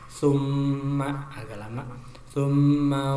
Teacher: di sini ada mim bertasjid namanya gunah, ditekan 2 harokat